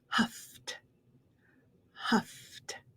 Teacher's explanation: you have a word that ends with an f like huff see how my teeth are on my lip going into that past tense of e d we go right into a t sound